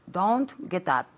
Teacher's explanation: she's linking the T with the U